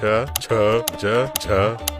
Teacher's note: ನಾಲಿಗೆಯು ಬಾಯಿಯ ಮೇಲ್ಚಾವಣಿ ಅಂದರೆ ತಾಳವನ್ನು ಮುಟ್ಟಿದಾಗ ತಾಲವ್ಯ, ಪಲಾಟಲ್ ಎಂಬ ಅಕ್ಷರಗಳು ಹುಟ್ಟುತ್ತವೆ.